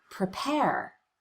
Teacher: the first syllable of the word prepare is the unstressed syllable we cut the vowel we rush through it as quickly